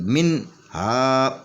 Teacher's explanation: اس نون کے اوپر آواز کٹ جائے گی، اس کے بعد ہا پڑھیں گے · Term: اظہار